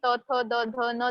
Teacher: तो अभी त थ द ध न जब हम प्रोनाउंस करते हैं, तब my tongue is touching to my upper teeth. मेरे ऊपरी दांत को टच करती है मेरी जीभ। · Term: दंत्याहा